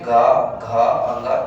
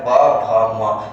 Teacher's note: कहने का मतलब है कि ये जो घोष या सघोष है, जब इन वर्णों का हम लोग जो उच्चारण करते हैं तो हमारा जो गला है उसमें क्या होता है, कंपन महसूस होता है · स्वर तंत्रियों में झंकार उत्पन्न होती है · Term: घोष या सघोष वर्ण